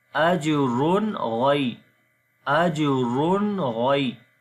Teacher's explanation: On the ra you can see there is tanween. After the tanween the next letter is ghain, which is from throttle letters, so we make izhar here, the clear sound of noon. · On the jim we make qalqala, which is the weak qalqala, and then ra we read in heavy sound. On the ra you can see there is tanween.